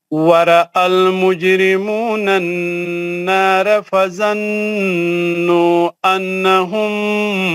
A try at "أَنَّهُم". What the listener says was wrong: نہیں انہم نہیں غنے کے ساتھ